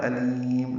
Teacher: لام کو لمبا کریں گے، باریک پڑھیں گے، اور میم ساکن پہ اظہار ہوگا، اظہار شفوی، دونوں پیشیں ساکن ہو جائیں گی۔